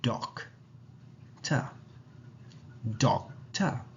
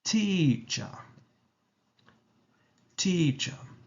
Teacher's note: In British English, that R is not heard when you speak it out loud. Whilst a speaker of American English would really say that R sound.